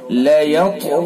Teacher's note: طا کو پر کریں گے اور طا کے اندر قلقلہ بھی کریں گے اور غین کو پر کریں گے